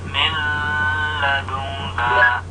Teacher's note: Idgham bila ghunah yaitu apabila ada nun mati atau tanwin bertemu dengan huruf lam atau huruf ra. Bila ghunah artinya dibaca idgham tapi tanpa ada suara sengau.